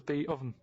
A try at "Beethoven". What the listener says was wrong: Beat Oven. No, you said beat. Beat Oven. It's not Beethoven.